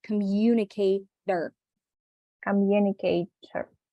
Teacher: a very fast T sound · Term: flap T